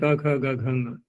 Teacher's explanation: ख का स्थान भी कंठ है, ग घ ङ सभी का स्थान कंठ है